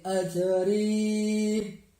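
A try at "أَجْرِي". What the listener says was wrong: Nah, bukan ajri, tapi azri ya. Ya, jadi tentukan tuh zai dengan jim.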